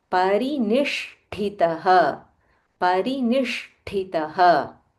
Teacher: There is a half Murdanya Sha and a Mahaprana Tha.